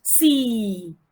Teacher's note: when the long vowel is in final position in a word, it has the longest duration